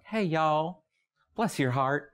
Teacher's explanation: there's a drawl and an elongation and a slowness to a Southern accent